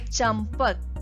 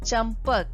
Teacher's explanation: देखिए मात्रा सेम है लेकिन यहाँ पे म की ध्वनि हमें सुनाई दे रही है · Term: अनुस्वार